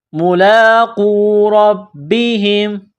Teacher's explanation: لام کڑا زبر لا، ایک الف کی لمٹ میں کھینچنا ہے ، قاف کو واو کے ساتھ پلس کرنا ہے، قاف کو